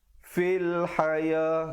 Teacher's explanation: Di situ alif lam qamariyah. Jadi lamnya jelaskan, bacanya fil bukan fail. Ramai orang baca fil haya, bukan fail tapi fil haya.